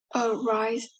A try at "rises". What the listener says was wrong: Okay, so remember to say the S's, okay? Rises, rises. Have to be careful to pronounce the S on the end of the word.